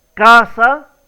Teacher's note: La pronunciación correcta es casa. Entonces es la primera sílaba la que lleva la mayor fuerza de voz y es la sílaba tónica